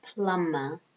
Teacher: Notice you don't pronounce the B. It's silent.